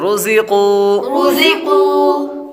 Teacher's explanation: را پر پیش ہے, را کو پر پڑھیں گے. قاف حروف مستعلیہ میں سے ہے اس لیے اس کو پر پڑھیں گے